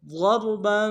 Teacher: را کے ساتھ ملانا ہے، را کو موٹا ادا کریں گے، با کے اوپر تنوین ہے، غنہ کریں گے